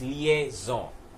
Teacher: It's originally a French word, and that's why the N in the word in the end is not really said.